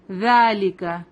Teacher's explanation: ذا پہ کھڑا زبر ہے 2 حرکہ لمبا کریں گے اس کو